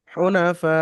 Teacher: এখানে 3 থেকে 4 আলিফ পরিমাণ টান দিয়ে পড়তে হবে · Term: মাদ্দে মুত্তাসিল